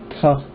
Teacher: the cerebral, which uses the tongue all the way at the top of the palate, ta, and then the dental just touches the rim of the teeth, ta, and then just the lips, pa.